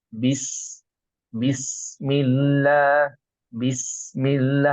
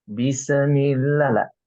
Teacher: Nah, bismillah ini bisnya atau sukunnya ini tidak boleh dipantulkan oleh kita ya, karena bukan qalqalah.